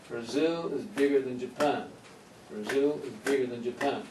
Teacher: even though we have eight syllables here twice the number of syllables the stress points are three